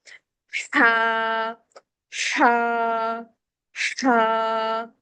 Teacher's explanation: اس کے ہا کے ساؤنڈ کے ساتھ ایک ہوا کا شور باہر نکلتا ہے، اور گلے کے اندر سے فیل ہوتا ہے کہ شور کے درمیان ہا کا ساؤنڈ ہے، ہا۔